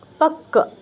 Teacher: সেই কষেত্রে প্রথম টাচ তারপর পূর্ণ উচ্চারণ যেমন পাক্কা প ক প্রথম কতে টাচ তারপর পূর্ণ ক এর উচ্চারণ